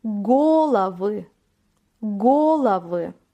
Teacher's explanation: çoğul halinde vurgu birinci heceye düşüyor Go hecesine goı bir sonraki örnek ülke strana vurgu son A